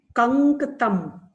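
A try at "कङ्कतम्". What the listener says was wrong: Kankatam. It is not dakara, it is nakara. It's anunasika letter. Nasal.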